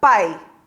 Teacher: quando pronuncio esta palavra o som da letra A sai com muito mais intensidade do que o som da letra i é como se o som da letra isso fosse se apagando